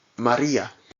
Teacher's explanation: The R involves a single tap of the tongue against the alveolar ridge. This result is a sound much like the DD in the name Eddie.